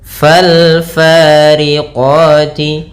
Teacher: Fal fariqati, di sini ada alif lam lagi, yaitu alif lam qamariyah, yaitu alif dan lamnya ditulis dan dibaca dengan jelas suara lamnya